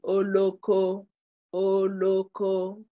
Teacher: The diacritics are going up. Your tone of voice is going up for all the O there. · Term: rising diacritics